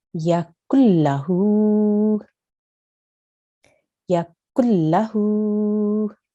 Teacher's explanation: I joined the kaf straight to the lam, okay? And you didn't hear a nasal sound there.